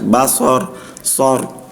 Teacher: Jadi sebelum ro sukun, sebelumnya fathah, maka dia hukumnya ro tafkhim seperti itu.